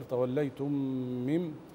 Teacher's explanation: ميم ساكنه بعدها ميم متحركه تغني مقدار حركتين